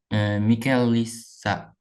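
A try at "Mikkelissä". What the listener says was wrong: And there's 2 K's, so it's Mikkelissa.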